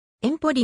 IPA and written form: ˈempoli (Empoli)